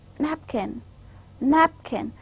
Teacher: For example, when I say a word napkin, napkin, now pa sound is more stressed, napkin. Now inside the word napkin, the pa sound is more stressed than the later part. So this way, the first syllable, that is nap, is more stressed.